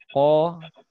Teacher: Qaf kita keluarkan dari aqsal lisan